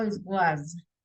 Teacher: the pronunciation is like a Z, like una Z, como esa vibración, como que fuera las abejitas